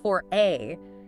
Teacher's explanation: You hear the R because A starts with a vowel sound.